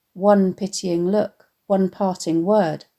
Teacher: the plosive alliteration of the p sound